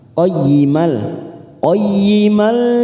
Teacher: hanya masuk tanpa mendengung, tanpa ditekan lama-lama.